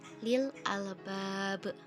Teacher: Nah, untuk penjelasan qalqalah kubronya, karena salah satu huruf qalqalah yaitu ba berada di akhir kalimat sehingga diwaqafkan dan dibaca secara memantul